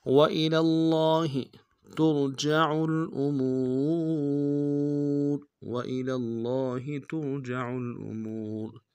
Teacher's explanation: تا کو را کے ساتھ ملانا ہے، را کو موٹا ادا کریں گے